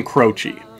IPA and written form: ˈkroʊtʃi (Croce)